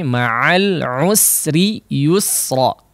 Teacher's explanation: Huruf sin di sini harus tipis ya.